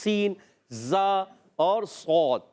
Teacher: زا سین صاد تینوں کا ایک ہی مخرج ہے، زبان کی بالکل باریک نوک، اور ثنائے سفلا اور ما اتصال ثنائے علیہ، یعنی نیچے والے دانتوں کے کنارے اور کچھ اتصال اوپر والے دانتوں کے کناروں سے، تو ادا ہوتا ہے زا سین صاد.